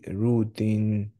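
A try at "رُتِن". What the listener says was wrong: রুতে slide টান হয়ে গেছে, রুতিন, না, রুতে আবার একটু ট্রাই, স্লাইড টান হয়ে গেছে, হ্যাঁ? রুতিন, রুতিন, না, রু রুতিন,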